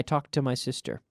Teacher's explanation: When I speak quickly, notice how it almost sounds as if there's one T. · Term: linking the sounds